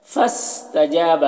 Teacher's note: فا کے الف کو نہیں پڑھا جائے گا، فا سین سے ملے گا۔ فاستجاب، جیم میں الف مدہ ہے، اسے ایک الف کے برابر کھینچ کر پڑھیں گے۔